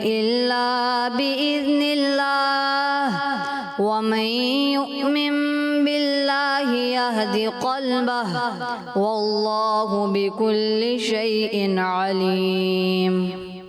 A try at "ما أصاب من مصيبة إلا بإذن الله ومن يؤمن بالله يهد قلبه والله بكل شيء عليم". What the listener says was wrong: پیارے بچے، آپ جو ہے نا اس چیز کا خاص خیال رکھیں کہ ماں کھینچے نا تو آپ کھینچ سکتے ہیں، اصابہ یہ نہیں کھینچنے کا، یہ مد اصلی ایک الف کھینچنا ہے، حرف مدہ جو ہوتا ہے نا اس کو ایک الف کھینچنا ہوتا ہے، تو آپ اس چیز کا خاص خیال رکھیں گے۔ 10 میں سے 9 نمبر۔